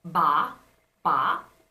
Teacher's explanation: comes out of your mouth so when you say ba ba there isn't that strong burst of air